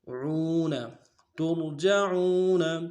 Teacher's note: عین کو واو کے ساتھ ملانا ہے، واو مدہ ایک مقدار میں کھینچیں گے ، عین کو گہرائی سے ادا کریں گے، عون ترجعون فیہ،